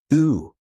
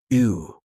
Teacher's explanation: say E but keep your lips rounded.